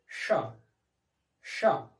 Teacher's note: इसका उच्चारण स्थान तालु है और इसमें सीटी जैसी ध्वनि निकलती है। तो जब हम इसका उच्चारण करेंगे तो करेंगे श, श, सीटी जैसी ध्वनि आएगी और तालु से इसका उच्चारण होगा। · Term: तालव्य